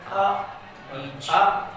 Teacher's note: अब जैसे उच्चारण करेंगे आ बीच आ बीच वाले से मतलब तो बीच वाला हिस्सा थोड़ा सा क्या कर रहा है? उठने का प्रयत्न कर रहा है जीभ का। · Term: मध्य स्वर